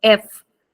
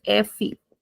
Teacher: In European, we don't extend the sound, so we say kind of F, just like in English. Whereas in Brazilian, we say FE. We extend it a little bit.